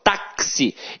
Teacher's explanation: Então, o X aqui tem som de KS. Ou seja, uma letra tem 2 sons. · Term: dífono